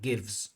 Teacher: Gives the vz without any extra syllable without any extra vowel sound.